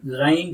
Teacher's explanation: Ghain will produce from upper side of the throat, top side of the throat